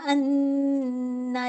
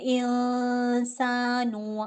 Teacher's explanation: अन्ना पे ज़्यादा होल्ड, इंसान पे मुझे कम होल्ड देना है। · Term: अकमल गुन्ना